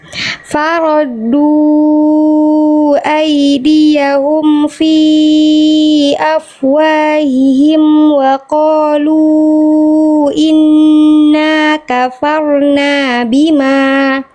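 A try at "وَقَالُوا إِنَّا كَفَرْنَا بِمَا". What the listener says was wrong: Nah, rohnya sama kafarna, jangan kafarna. sudah bisa roh sukun, cuman memang mungkin masih sering kebiasaan roh sukunnya samar, jangan samar, ya samar. Nah, rohnya ada getarannya, ya. Jadi bukan kafarna, tapi kafarna.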